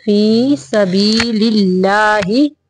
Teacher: अल्लाह का लाम बारीक पढ़ेंगे